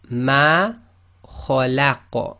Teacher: the qaf becomes sakin, that's one of the qalqala letters, so it becomes an echo